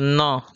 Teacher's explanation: हल्का सा जो है नाक में कंपन होता है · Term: नासिक्य